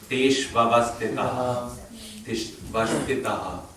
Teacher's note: notice I echoed the H dot at the end.